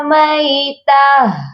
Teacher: جب بھی گول والی تا کو ہم وقف کی صورت میں پڑھتے ہیں یا گول والی تا پر آ کر رکتے ہیں، وقف کرتے ہیں، تو ہم تا کو نہیں پڑھتے بلکہ ہم ہا کو ساکن کرتے ہیں، ہا کی آواز پر آ کر رکتے ہیں، ہا کو ساکن کرتے ہیں۔